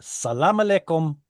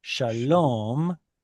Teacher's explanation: So here you get a long ah becoming long o. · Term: Canaanite shift